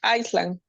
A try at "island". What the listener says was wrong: Island. The S, no sound. Island.